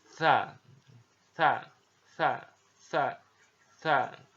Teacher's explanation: dikeluarkan dengan menyentuhkan ujung lidah kita ya dengan dinding dua gigi seri bagian atas · Diucapkan dengan suara dan nafas yang terdengar mengalir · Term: huruf tsa, huruf sa